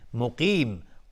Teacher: قاف از حروف استعلاست غلیظ تلفظ میشه